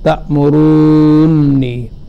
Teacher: تشدید کی صورت میں اول کا دوسرے میں ادغام ہو گیا ہے